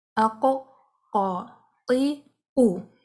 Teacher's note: نرم حصہ ہے ہمارے پیلٹ کا، اس کے ساتھ ٹچ کریں گے تو قاف کی آواز آئے گی